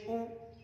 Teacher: پیش کے اندر ہمارے دونوں ہونٹ گول ہوں گے